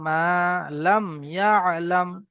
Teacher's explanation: এখানে মিম সাকিনের পরে ইয়া এসছে, তাই গুন্না হবে না।